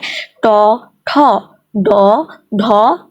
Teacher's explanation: ট, ঠ উচ্চারণ করতেছি আমরা, তখন আমাদের জিভের ডোগাটা হচ্ছে দন্তমূলের পিছনে উঁচু অংশ, যে পিছনের দিকে চলে যাচ্ছে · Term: মূর্ধন্য ব্যঞ্জন